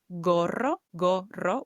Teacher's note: with a hard g instead of like horo which would be incorrect as it's followed with an o